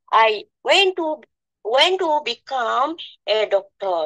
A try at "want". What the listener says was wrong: এটা হচ্ছে ওয়েন্ট না, উচ্চারণটা হবে ওয়ান্ট, ওয়ান্ট, হ্যাঁ। I ওয়ান্ট to become a doctor, আমি একজন ডাক্তার হতে চাই। তো এইটা হচ্ছে I ওয়ান্ট to become a doctor, আমি একজন ডাক্তার হতে চাই।